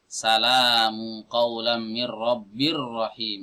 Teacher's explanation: Ini tetap dikatakan tanwin meskipun tidak terdengar suara nunnya. Hal itu disebabkan karena diidghamkan ke huruf ra.